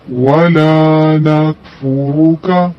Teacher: نہ ہی ولا کو جلدی سے پڑھیں گے، ولا نکفر نہیں پڑھیں گے، لام کو کھینچیں گے کیونکہ لا کا مطلب ہوتا ہے نہیں۔